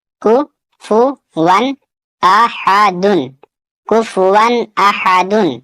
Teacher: تنوین کے بعد حمزہ ہے اور حمزہ حروف حلقی میں سے، یہاں بھی تنوین کا اظہار ہوگا